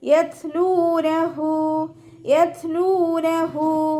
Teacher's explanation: താ സുക്കൂനാവുമ്പോൾ കുറച്ച് എയർ പുറത്തോട്ട് പോണ സൗണ്ട് കൊടുത്തിട്ട് ഉച്ചരിക്കുക കേട്ടോ.